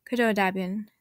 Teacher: The initial w is silent by itself, but affects the way the attached prefix is pronounced.